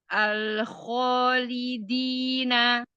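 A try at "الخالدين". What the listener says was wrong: Nah, ambil khonya juga jangan terlalu ya.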